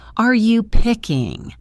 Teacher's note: In this question, are you is usually said quickly. The word are is just a fast R sound.